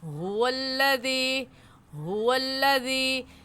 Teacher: हा हलक का आखिर जो सीने की तरफ है उससे निकलता है, तो इस हा को वाज़ेह करके पढ़ेंगे हुवल्लज़ी हुवल्लज़ी।